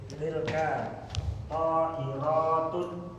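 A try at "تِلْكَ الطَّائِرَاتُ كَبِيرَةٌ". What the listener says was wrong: Ada alif lam, jangan tanwin. Jangan tun, itu ada alif lam.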